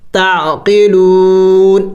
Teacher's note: وقف میں نون کو ساکن کر کے پڑھنا ہے ، تعقلون، لیکن نون کی آواز کو نکالنا ہے، تعقلون، أتأمرون